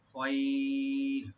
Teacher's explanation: ওয়াসসুলহু খাইর, এখানে আমরা থেমে যাব, তবে যখন থামবো আমরা রাটা একদম পাতলা হয়ে যাবে সাকিন সহকারে।